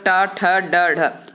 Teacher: ट ठ ड ढ क्या होते हैं, ये आपके दोस्तों मूर्धन्य होते हैं।